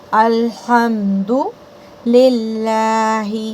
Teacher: ہوا کے ساتھ آپ نے اس ہا کو نکالنا ہے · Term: ہا میں ہوا